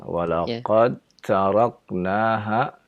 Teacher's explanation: Dal bertemu dengan ta, maka terjadilah idgham. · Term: idgham mutajanisain